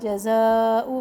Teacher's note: جزاء مد متصل 3 الف کے برابر